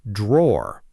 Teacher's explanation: No strong R sound at the end in British English, though American English does pronounce that final R more clearly. Drawer, the piece of furniture, is drawer, almost one syllable.